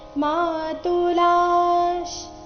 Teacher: ಲಾ ಆದ ನಂತರ ಇರೋ ವಿಸರ್ಗದ ಉಚ್ಚಾರಣೆ ಅರ್ಧಶ್ ರೀತಿ ಬರಬೇಕು